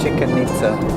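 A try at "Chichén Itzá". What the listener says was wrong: It's Chichen Itza, not Chicken Itza. No, it's not spelled like chicken. There's no K. I-C-H-E-N.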